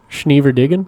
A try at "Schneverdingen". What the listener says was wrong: Oh, yeah, you gotta get the G in there.